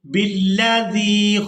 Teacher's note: زال کو نرمی کے ساتھ ادا کریں گے اور یا ساکن کے ساتھ ملاتے ہوئے کھینچ کر ادا کریں گے